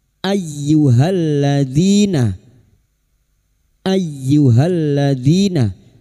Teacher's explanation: huruf hamzah masuk pada huruf ya hanya masuk tanpa ditahan lama-lama tanpa mendengung · lam ta'rif yang bertemu dzal idgham syamsiyah. Halladzina, di kasar bertemu ya sukun 2 harokat mad tabi'i.